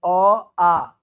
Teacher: तो अ आ ये डायरेक्ट कंठ से आता है